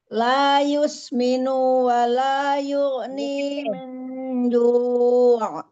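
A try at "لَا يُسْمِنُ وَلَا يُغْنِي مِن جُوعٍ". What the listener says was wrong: Nunya pendek ya. Itu nunya pendek. La yusminu wa la yughni min ju'. Ju'. Jadi jangan di juak gitu ya. Menarik pinggiran bibir juak. Itu enggak ju. Halki aja ini biasa netral nih mulutnya netral. Ju. Ya, jadi jangan juak gitu, jangan ditarik.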